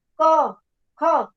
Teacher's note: નાદ તંત્રીઓ છે એનો કંપ જ્યારે ઓછો હોય, બરોબર, ત્યારે એને અઘોષ ધ્વનિ કહેવાય છે. ક, ખ એમાં કંપ ઓછો છે એટલે એને અઘોષ કહેવાય છે.